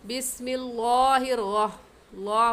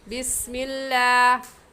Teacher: और आम तौर पर हम ये गलती कर जाते हैं, बिस्मिल्लाहिर ला गलत है, ये है बिस्मिल्लाह। हम यहाँ पर लफ्ज़ अल्लाह को बारीक पढ़ेंगे और बारीक करने का तरीका कि आपके दोनों होंठ फैल जाए